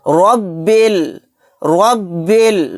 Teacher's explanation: ربل، ربل، با کو لام میں ملا دیں گے، را کو یہاں پر موٹا یعنی پر پڑھیں گے کیونکہ را کے اوپر زبر ہے